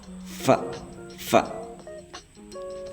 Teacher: Fa itu sapawi asnani antara bibir dan gigi. Jadi kayak digigit tapi enggak digigit. Kayak menempelkan gigi atas ee dengan bibir bawah.